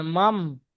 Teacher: নুন সাকিনের পরে বা এসছে তাই নুন সাকিনটা মিমের দ্বারা পরিবর্তন করে পড়তে হয় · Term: ইগলাব